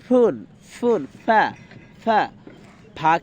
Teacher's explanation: দুই ঠোঁট মিলিয়েও ফা বলতে পারি কিন্তু সেটা সঠিক উচ্চারণ নয় সঠিক উচ্চারণটা হলো সামনের দুই দাঁত এবং নিচের ঠোঁটের পেট মিলিয়ে তারপর হয় ফ্যা ফ্যা